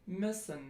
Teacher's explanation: the near close near front rounded lax vowel